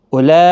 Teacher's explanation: اولئک، اب دیکھیں یہاں پر کھڑی حرکات کے بعد حمزہ آیا ہے شکل میں، تو یہ ایک ہی کلمے کے اندر ہے، گویا کہ یہاں پر بڑی مد ہے، مد متصل، جس کو 4 الف کی مقدار کے برابر کھینچنا ہے، بقدر اس مد منفصل کے تھوڑا سا زیادہ کھینچنا ہے۔